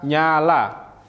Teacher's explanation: bunyi nasal ini melibatkan laminum atau daun lidah sebagai artikulator aktif dan palatum sebagai artikulator pasif aliran udara dialihkan melalui rongga hidung ketika laminum mendekati palatum contohnya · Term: bunyi nasal laminopalatal